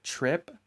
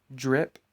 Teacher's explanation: You pronounce them by placing the tip of your tongue against your alveolar ridge and forcing air out of your mouth. T is a voiceless sound. D is voiced.